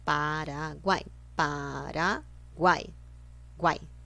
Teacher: U-A-I. São 3 vogais, ou seja, um tritongo pronunciado junto. Pronunciadas juntas.